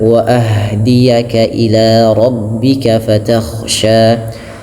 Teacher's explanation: huruf ha sukun terdapat sifat namanya sifat hamas dan dia lembut